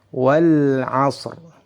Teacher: huruf shadnya dibaca dengan tebal karena memiliki sifat isti'la dan sifat iltibaq. Kemudian diiringi dengan suara nafas, sifat hams